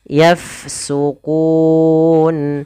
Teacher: pada lafal fa bertemu dengan huruf huruf fa dia sukun, maka kita alirkan nafasnya. Yafsukun. Kemudian pada lafal kun ada bacaan mad arid disukun, yaitu bacaan yang terjadi disebabkan karena ada sukun akhir, sukun arid atau sukun yang timbul karena waqaf.